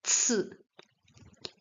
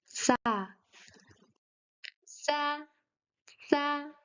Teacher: This letter looks like the common and known k sound, C sound, but in Chinese it is pronounced c. It is pronounced like t plus s, c.